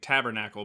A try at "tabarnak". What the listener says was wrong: You just got to put a bit more emphasis on the K because it's not CLE at the end, it's a K. So it goes tabarnak.